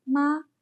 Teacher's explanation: the word ma has a flat tone, which we call the first tone.